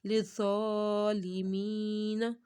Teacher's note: آ رہی ہے، مین ذا کے اوپر کھڑا مد ہے تو ذا کو موٹا بھی پڑھنا ہے، حروف مستعلیہ میں سے ہے، اور کھڑے مد کو ایک الف کے برابر لمبا کرنا ہے۔